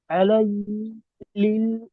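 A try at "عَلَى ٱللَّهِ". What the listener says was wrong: আলী, হ্যাঁ এখানে ভুল আছে অবশ্য, আলাল্লাহি হবে, এটা আলাই হয়ে গেছে আর কি।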